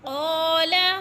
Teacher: अब हम अलग अलग पढ़ेंगे। क़ाल क़ाफ को पुर करके मोटे हरूफ में से है, और क़ा इधर अलिफ मद्दा हो रहा है, 3 हरकात के बराबर खींचकर। अलिफ खाली से पहले क़ाफ के ऊपर ज़बर है तो अलिफ मद्दा।